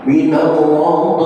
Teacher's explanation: Tetapi untuk tak marbutah, matinya bukan hams tetapi berubah menjadi ha. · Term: ta marbutah